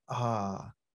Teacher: it's a long vowel sound called ah like ah as in father